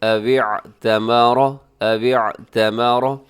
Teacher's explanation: را موٹا پڑا جائے گا اور عین کا خیال رکھیے گا